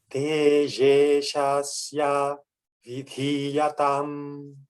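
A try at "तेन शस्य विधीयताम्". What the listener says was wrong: It's a nakara. Tene shasya. you're getting the letter. It's just that sometimes you do long and short.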